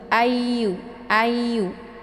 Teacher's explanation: cara bacanya itu Ditekan a-nya ya kemudian langsung dileburkan suaranya ke Yu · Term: tasydid